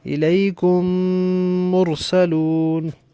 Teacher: اب یہاں تھا کاف میم پیش کم، میم ساکن ہے، آگے میم را پیش مر، تو میم ساکن کے بعد دوسرا میم آ گیا، لہذا دونوں میموں کو اکٹھا کر کے پڑھیں گے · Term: ادغام شفوی